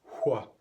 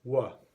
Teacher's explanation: the sound hua has largely disappeared from American English and has merged with the sound wa